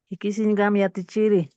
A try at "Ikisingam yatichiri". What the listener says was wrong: Waliki, muy bien, good job.